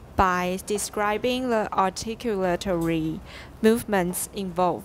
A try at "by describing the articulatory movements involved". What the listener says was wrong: Pretty good.